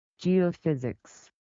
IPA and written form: dʒiːoʊfɪzɪks (Geophysics)